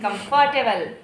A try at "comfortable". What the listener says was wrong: comfortable नहीं, comfortable, सी पे जोर डाला है, comfortable, हाँ, हम लोग क्या पढ़ते हैं, comfortable, यही कहते हैं ना हमेशा, comfortable.